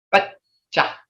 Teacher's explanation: you can't hear the D because your tongue's on your palate again